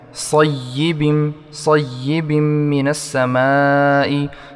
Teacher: सय्यिबिम मिनस समाई इसमें मद है, उसको 5 सेकंड तक खींचेंगे।